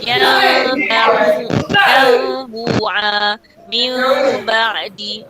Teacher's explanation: menukarkan bunyi nun kepada mim serentak dengan dengung. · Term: bunyi iklab